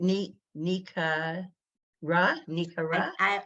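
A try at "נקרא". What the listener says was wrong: Now we know that's not right. We know it's nikra. So we know the kuf ends a syllable, and so the 2 dots are silent. Nikra.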